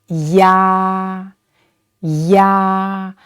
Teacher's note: please note in this compound final the a is much longer and louder than the e sound